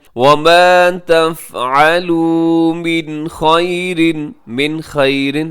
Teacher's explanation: نون ساکن کے بعد حروف حلقی میں سے خا ہے، یہاں اظہار کیجیے گا